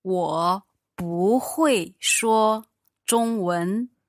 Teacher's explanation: But here, because it's followed by 会, which is the fourth tone, it sounds... You change the 不 into second tone.